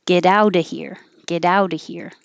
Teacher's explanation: get out of here get out those t's change to d's